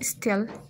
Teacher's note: burada S hərfindən sonra T gəldiyi üçün loss of aspiration hadisəsi var